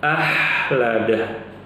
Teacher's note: seringkali huruf Kho nya diubah menjadi hak kecil